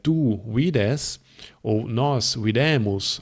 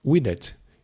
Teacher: tu vides ou nós videmos, as duas com um é longo, mas na terceira pessoa do singular nós temos videt, e esse é curto